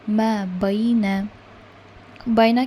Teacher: یا ساکن سے پہلے ہمیں زبر ملا ہے، تو یہ آپ کا ہو گیا حروف لین۔ ہم اسے 2 کاؤنٹس میں کھینچیں گے کیونکہ ہم کنٹینیو کر کے پڑھ رہے ہیں۔